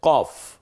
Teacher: এটা হচ্ছে কফ জিহ্বার একেবারে গোড়া থেকে